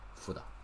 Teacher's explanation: 辅导 become 辅 second tone. 导 third tone. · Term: 连续变调